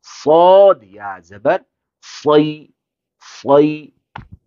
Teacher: تھوڑا سا موٹا کریں گے، سین کو باریک پڑھتے تھے ہم، صاد کو موٹا پڑھیں گے لیکن ہونٹ گول نہیں ہوں گے